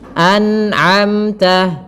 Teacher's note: pada lafal an'amta harus dijelaskan nunnya dan tidak boleh memantul, tidak boleh an'amta.